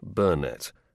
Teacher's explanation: He always preferred the stress on the first syllable of his name